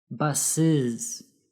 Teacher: Notice how the last syllable sounds like /IZ/